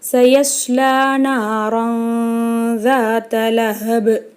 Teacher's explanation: இங்கே தன்வீனுக்கு அப்புறம் ஜால் வந்திருக்கு. இங்கே நம்ம குன்னா செஞ்சு ஓதணும்.